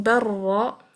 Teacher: you're going straight from the ba to the ra, dropping the lam completely into ra. So ra is carrying a shadda. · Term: complete merging